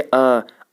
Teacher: अवृत्तमुखी वो होते हैं जब हम इनका उच्चारण करें तो हमारा जो होंठ होगा वो गोल नहीं रहेगा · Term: अवृत्तमुखी स्वर